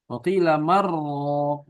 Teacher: nun sukun ketemu sama ra, ya di idgham